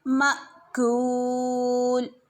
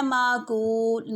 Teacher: ایک دم سانس بند ہو جاتا ہے جب ہم حمزہ کی ادائیگی کرتے ہیں